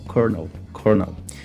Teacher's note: A gente tem aqui a dificuldade não só desse R, né, esse R inexistente que acaba aparecendo na palavra, mas também aqui a segunda sílaba, esse segundo O, ele não é pronunciado. Seria aqui só o R